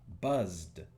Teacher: Tenemos buzzed, que es uno justamente de los pares, es el par con vibración de la S, así que tiene que ir con D.